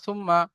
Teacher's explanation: সা মিম পে সুম, মিম জবর মা, সুম্মা, মিমের উপরে তাসদীদ এসেছে, মিম মুসাদ্দাদ গুন্না ওয়াজিব, আমরা সকলেই জানি। তাহলে মিমকে আগের অক্ষরের সাথে মিলিয়ে পড়ার সময় এক আলিফ পরিমাণ গুণনা করে পড়তে হবে।